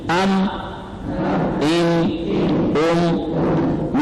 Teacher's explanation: ام ان ام میم کو شد کے ساتھ. اب شد آ گیا تو غنہ بھی بن گیا.